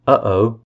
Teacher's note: The glottal stop, as in uh-oh, or also known as T dropping in butter and city, is formed by closing the vocal folds in the throat.